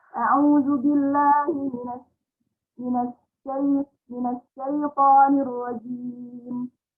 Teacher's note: Jadi ketika membaca sin, betul-betul harus at-tafassi, mengalirnya dengan menyebar angin.